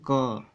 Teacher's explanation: ऐसा लगेगा कि कंठ से वह आवाज़ आ रहा है